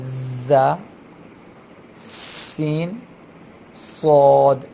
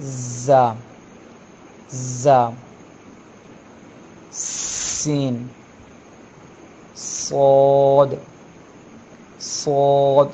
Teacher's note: ज़बान की नोक नीचे वाले दांतों से जब लगती है, नीचे वाले दांतों की जड़ से या किनारे से लगाएं तो तीन हरूफ अदा होते हैं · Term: हरूफ सफीरिया